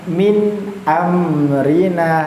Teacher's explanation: nun sukun ketemu alif, sama-sama jelas ya, izhar, tidak didengungkan dan tidak ditahan sebanyak 2 harokat